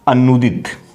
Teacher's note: ये देखो प्रथम शब्द अंतिम ध्वनि उ और दूसरा शब्द पहली ध्वनि उ, ये उ और उ मिलके बड़े उ में परिवर्तित हो जाएगा